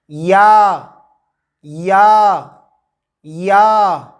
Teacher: زبان کے درمیان کو، زبان کا درمیان ہے، اس کو تالو کی طرف بلند کرتے ہوئے باریک آواز میں پڑھیں گے یا یا یا۔